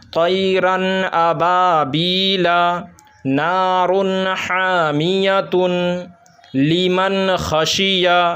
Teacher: تو ناظرین، جہاں جہاں پورے قرآن مجید میں جہاں جہاں اس طریقے سے آئے گا کہ نون ساکن کے بعد یا 2 زبر 2 زیر 2 پیش تنوین کے بعد اگر حروف حلقی کے 6 حرفوں میں سے کوئی بھی حرف آ جائے تو اس نون کو بلا غنہ کے جلد پڑھیں گے، صاف پڑھیں گے، اظہار کر کے پڑھیں گے، غنہ نہیں کرنا ہے